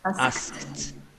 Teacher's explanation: el sonido que tiene antes te obliga a que vos pronuncies una T porque no puedes marcar una D después de ese sonido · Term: sonido de T